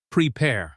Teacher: prepare should stress the second syllable.